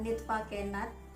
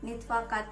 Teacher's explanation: laki-laki menghapus fonem N dan T ketika keduanya bertemu di dua vokal dalam satu kata